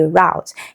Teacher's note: O U represents the vowel sound, which is a diphthong, ow